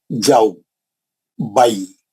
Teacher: इन 2 हरफों को नर्म आवाज के साथ जल्दी अदा करें। इसको खींचना नहीं है, ये मद नहीं है। मद बोलते खींचने वाली चीज को, ये मद नहीं है, ये लीन है। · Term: हुर्फ लीन